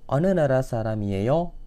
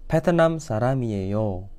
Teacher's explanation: kalau bentuk interogatif itu agak sedikit naik intonasinya